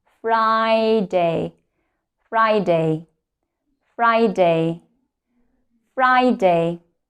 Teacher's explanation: we actually don't put the stress to the words day. The primary stress is on the first syllable.